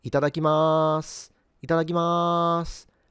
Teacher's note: they actually tend to sing it a little bit, and sometimes they will extend the ma towards the end, so it will end up sounding more like itadakimasu, itadakimasu, and occasionally might even sound like they put a little tsu or a doubling in the first ta, a bit like itadakimasu.